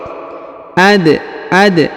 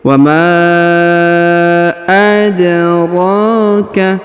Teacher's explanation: Huruf dal berharokat sukun maka kita baca pantul atau qalqalah.